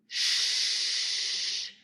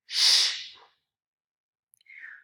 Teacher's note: So it is a fricative. So this is a voiceless post-alveolar fricative.